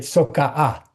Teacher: K deletes between vowels, but only when you add another morpheme.